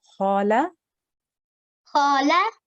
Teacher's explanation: a kha with a simple fatha and then a lam with a simple fatha. Both of these sounds will be for 1 second each.